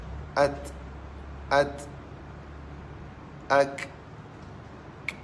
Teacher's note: Hamas, terlepas nafas. Terlepas nafas. Itu hamas.